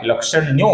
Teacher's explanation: आगे की पंक्ति में पहला नाम है सर्वलक्षण लक्षण्यः, जिसके विसर्ग का आगे ल आने के कारण ओ हुआ है, लक्षण्यो हुआ है।